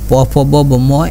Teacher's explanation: উষ্ট মানে হচ্ছে ঠোঁট, অর্থাৎ প ফ ব ব যদি আপনি উচ্চারণ করেন তখন বাতাস ঠোঁটে আসা মানে ঘর্ষণ করে বা ধাক্কা দেয়, যার কারণে ঠোঁট ধ্বনি বলে।